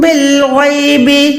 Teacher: ان الذین یخشون ربہم بالغیب، با کو لام کے ساتھ ملائیں، یہاں پر بھی الف کو ادا نہیں کریں گے، با لام زیر بالغین یا زبر غوئے، غین جو ہے حلق کے اوپر والے حصے سے ادا ہوتا ہے اور یہ بھی موٹا حروف ہے، حروف مستعلیہ میں سے ہے۔